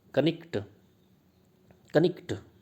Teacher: Other silent letters were also pronounced, silent letter भी pronounce किए जाते थे, जैसे नाइट को इस तरह से बोला जाता था, कनिक्ट, कनिक्ट, नाइट को कनिक्ट बोलते थे स्पेलिंग के हिसाब से, विद बोथ द के एंड जी एच प्रोनाउंस्ड, तो के को भी प्रोनाउंस करते थे, जी को भी। नॉट नाइट, जो अब हम इस तरह से प्रोनाउंस करते हैं नाइट, तो ये याद रखने वाली चीज़ है, ध्यान रखने वाली चीज़ है।